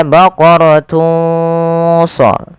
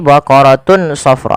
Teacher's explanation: samarkan suara tanwinnya kepada huruf shad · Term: ikhfa